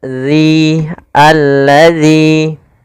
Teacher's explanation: Pada lafal dalal makhrajnya harus tepat yaitu ujung lidah kita. ujung lidah menempel dengan gigi seri atas